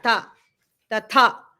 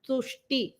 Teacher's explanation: People will try to, you are giving stress in the first word, so you tend to give the stress in the next word also. Tatha has the Mahaprana, ta, tatha. But the next word, tushti, the ta and ta, they don't have Mahaprana.